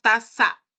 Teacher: Lengua la subimos al alveolo. Es una característica del castellano del Perú. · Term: ceseo